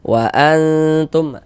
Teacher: Jadi bagian annya itu suaranya itu kita tahan, kita panjangkan sebentar sepanjang dua harakat.